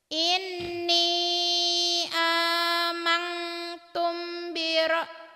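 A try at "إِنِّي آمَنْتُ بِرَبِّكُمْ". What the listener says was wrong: Kenapa dapat tum dari mana? Amantu. Inni amantu bi rabbikum fasma'un.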